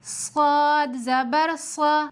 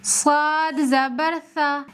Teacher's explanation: صاد میں سیٹی کی بھی صفت ہے، سیٹی کے ساتھ پڑھیں گے صاد زبر صا، بغیر سیٹی کے پڑھیں گے تو صاد زبر سا۔